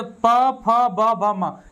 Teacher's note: दोनों ओठ जो है ना वो स्पर्श कर रहा है, एक दूसरे को छू रहा है। तो ऐसे व्यंजन को हम लोग छुआइल व्यंजन कहते हैं या स्पर्श व्यंजन कहते हैं।